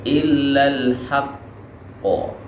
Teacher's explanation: cara membacanya adalah dengan berhenti sebentar baru diucapkan qolqolah